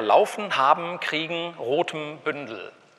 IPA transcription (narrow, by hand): la͡ɔfn̩ la͡ɔfən; habm̩ habən; kʁi:gŋ̍ kʁi:gən; ʁo:tm̩ ʁo:təm; bʏndl̩ bʏndəl